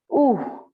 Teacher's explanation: ऊ, बड़ी मात्रा है ऊ, आपको इसको लंबा खींचना पड़ेगा